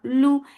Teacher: Wu, ba is for dhamma circle lips, the sound is short. Lu, lam is light for dhamma circle lips, the sound is short.